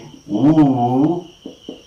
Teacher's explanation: when we say ooh all right the back of the tongue is lifted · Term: back close